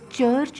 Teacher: you begin the sound with the plosive ta but then this is immediately followed by fricative sha sound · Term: affricate, affricates